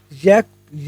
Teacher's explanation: य का उच्चारण स्थान जो है तालव्य है तालव्य या फिर तालू तालू बोलते हैं ना तालव्य को तालू